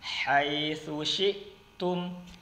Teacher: Jadi keluarnya halus ya, karena dia di bagian tengah tenggorokan.